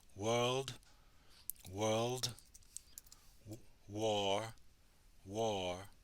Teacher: so it's a very soft R coloration